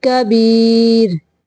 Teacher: कबीर, रा को बारीक पढ़ेंगे